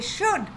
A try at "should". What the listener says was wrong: Not should. L is silent.